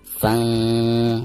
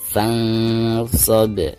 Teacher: Maka suara nun sukunnya itu harus disamarkan.